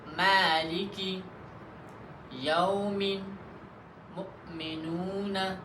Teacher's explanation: میم یہ دونوں ہونٹوں کی خشک حصے سے ادا ہوتا ہے، یعنی جب دونوں ہونٹوں کا خشک حصہ ایک دوسرے کے ساتھ مل جائے تو وہاں سے میم ادا ہوتا ہے۔ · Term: حرف میم کا مخرج